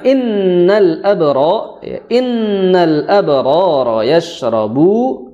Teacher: shin dia memiliki sifat tafasyi atau menyebarnya udara di dalam mulut. Namun yang menjadi peringatan bagi kita bahwa huruf shin itu cara mengucapkannya dengan lembut, karena dia memiliki sifatnya atau karakternya itu lembut, lemah.